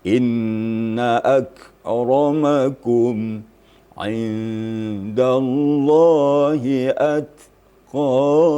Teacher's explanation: Decitan bahawa ta itu ada mahmusnya. Jadi kaf dan ta apabila huruf itu mati atau sukun maka menonjol itu mahmusnya sedikit, ya. Inna akramakum indallahi atqakum.